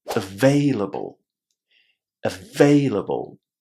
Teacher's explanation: we put the stress on the second syllable